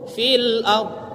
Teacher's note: Fil ard ada ro ya, ro-nya yang sukun di situ itu tafkhim dibaca. Karena didahului baris sebelum ro yang sukun ini baris fathah, sehingga dia menjadi tafkhim ro-nya.